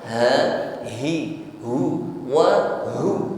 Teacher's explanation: Tampakkan huruf h-nya di sini, ya, jangan ngambang, sampaikan pada makhrajnya aqsal halqi, tenggorokan paling bawah